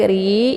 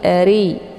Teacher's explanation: rnya dibaca tipis ya karena rnya berharakat kisrah ya dengan posisi mulut itu terbuka lebar akhiri RI ya bukan RI